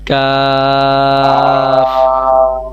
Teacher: জিহ্বার গোড়া হইতে একটু আগে বাড়াইয়া তার বরাবর উপরের তালুর সঙ্গে লাগাইয়া উচ্চারিত হয়